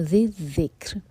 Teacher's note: اس کو ساکن کریں گے تو لائٹ را ہوگا کیونکہ اس سے پہلے ہے کسرہ